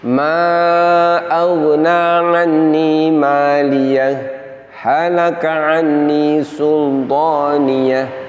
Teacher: Apabila tidak disaktah maka akan terdengar seakan-akan ini adalah satu kata atau satu lafaz. Maka dengan disaktah maka akan tampak jelas bahwa dua huruf hak tersebut berada pada dua lafaz yang berbeda.